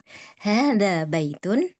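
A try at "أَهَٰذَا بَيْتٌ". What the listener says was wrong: Pakai pakai hamzah, Bu. E diperjelas ini Hamzah nih.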